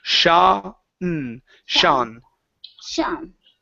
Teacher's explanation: take out the oo sound and go directly to an ah